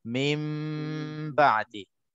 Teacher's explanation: Nun mati ataupun tanwin bertemu huruf ba dalam satu ataupun dua perkataan, maka hukumnya iqlab. Cara bacaannya dengung dua harakat.